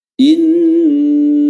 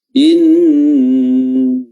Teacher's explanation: durasi nun tasdid itu lebih dipanjangkan sedikit atau banyak, ya, daripada tasdid di huruf-huruf biasa, huruf yang lain.